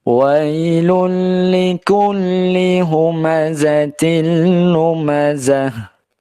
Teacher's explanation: hukum bacaannya adalah idgham bila gunnah, masuk dengan tanpa disertai dengan dengungan